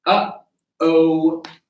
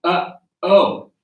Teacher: Again, this can be very helpful for chord closure because it is chord closure. It's really the vocal cords coming right together on that first sound. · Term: glottal sound